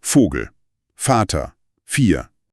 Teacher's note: wir pusten nur Luft hindurch. Es gibt keine Vibrationen der Stimmbänder.